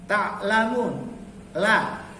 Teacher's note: hukum lam di sini dibaca tipis atau tarkik karena lamnya bukan terdapat pada kata Allah.